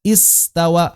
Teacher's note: Maka hamzah wasal ini, kalau tsumma-nya nggak dibaca, kita baca dari hamzah, maka baca istawa, hamzahnya bunyi. Eksis saat di awal.